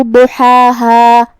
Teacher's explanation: ضاد کی ادائیگی زبان کے کروٹ اور اوپر کے داڑھوں کی جڑ سے ہے. ضاد حروف تفخیم میں سے بھی ہے تو ہمیں اسے بھاری آواز میں منہ پھلا کے ادا کرنا ہے.